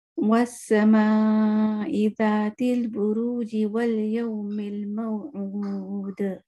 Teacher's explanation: بٹ موعود پہ جا کے میں نے کلکلہ کر دیا کیونکہ یہاں میں رک گئی تھی